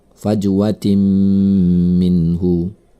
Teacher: ada tanwin bertemu dengan mim bertasydid maka ini adalah Idgham Bighunnah cara membacanya tanwin tersebut melebur kepada huruf sesudahnya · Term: idgham bi gunnah